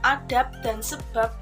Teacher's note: Netralisasi adalah perubahan bunyi fonemis sebagai akibat pengaruh lingkungan. Misalnya, fonem B pada silaba akhir pada kata adab dan sebab diucapkan P. Adab dan sebab yang persis sama dengan pengucapan fonem P pada atap dan usap.